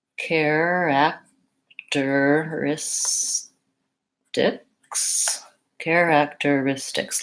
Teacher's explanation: lots of syllables one two three four five and the stress comes on this syllable the second-to-last syllable